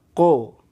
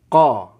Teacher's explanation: kalau qof mati itu Qalqalah bunyinya Koo kalau qof fathah qo